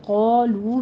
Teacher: واو مدہ ہے، دونوں ہونٹوں کو گول کیجیے اور 2 کاؤنٹ کرنا ہے